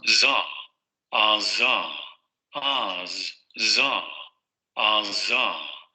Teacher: Alveolar fricativo sonoro, el mismo punto, los mismos puntos y modos de articulación que el fonema anterior. La lengua va a subir hacia la zona de los alvéolos, ahí es donde se va a producir la fricación, y luego el asunto va a ser con la vibración de las cuerdas vocales.